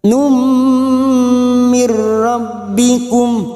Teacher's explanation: nun sukun bertemu ro idgham bila gunnah, nun sukun atau tanwin yang bertemu dengan 2 huruf ini yaitu huruf lam dan huruf ro namanya idgham bila gunnah, hanya masuk tanpa mendengung.